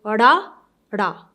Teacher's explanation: And then this is your tongue. So, Ra sound comes when you hit your tongue from the back of your palate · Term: Rada